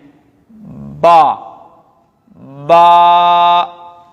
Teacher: یہ ہمارے دونوں ہونٹوں کے ملنے سے ادا ہوا با، تو یہ دونوں ہونٹ با کا مخرج ہیں۔